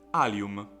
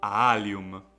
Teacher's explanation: it is clear that the two a's have the same quality but not the same quantity